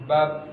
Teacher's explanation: oh berhentinya ketika kedua bibir ini bertemu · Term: huruf ba